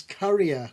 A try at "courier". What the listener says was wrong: No, they're bringing curries to your house, are they? Courier. No, courier. It's a courier, not courier. Courier. Courier. Not Q. You're going Q like not Q.